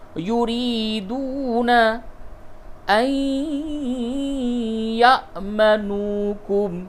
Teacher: نون ساکن کے بعد یا ہے، ادغام مع الغنہ ہوگا